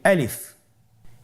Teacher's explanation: আলিফ হরফটি মাখরাজ হলো আপনার মুখের শূন্যস্থান থেকে, গলা এবং মুখের শূন্যস্থান হতে আলিফ হরফটি উচ্চারিত হয়।